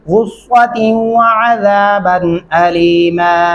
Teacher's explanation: غصۃ سین نہیں ڈالنا. دیکھیں صاد پڑھتے ہوئے ہونٹ گول ہو جاتے ہیں